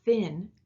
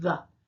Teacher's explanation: the voiceless TH is like in thin, and the voiced TH is the, as in the